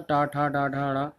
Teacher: इसमें जो जीवा होती है हमारी, वो तालु से ऊपर ऊपर ऊपर की सतह से टकराते हुए नीचे झटके से आती है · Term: मूर्धा व्यंजन